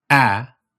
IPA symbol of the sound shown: ɑ